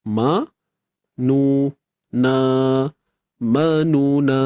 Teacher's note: Ma 1 harakat, nu 1 harakat, na 2 harakat.